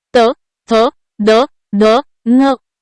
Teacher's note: दंत व्यंजने ज्यांचा उच्चार दातांच्या सहाय्याने होतो